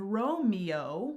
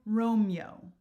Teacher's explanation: instead of Romeo, which would be 3 syllables, it changes to Romeo, which is 2 syllables